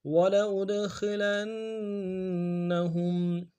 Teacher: سے قلقلہ کریں گے، وَلَأُدْ، خا کو موٹا ادا کریں گے، لام کو نون کے ساتھ ملانا ہے، نون کے اوپر تشدید زور دیں گے ، ہا کو میم ساکن کے ساتھ ملانا ہے، میم ساکن